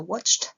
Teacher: Là la terminaison ed se prononce te.